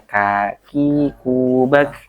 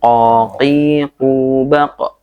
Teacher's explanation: Tempatnya keluarnya huruf qaf itu lebih dalam ya. Kita menggunakan ujung lidah belakang ya, ujung lidah belakang untuk menyentuh langit-langit yang lebih dalam, itu huruf qaf. · Kalau K itu langit-langit tengah ya. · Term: huruf kaf biasa